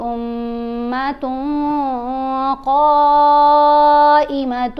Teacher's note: تن میں جو نون کی آواز ہے اس کو ہم نے ناک میں چھپا کر پڑھا، یہ احفا ہے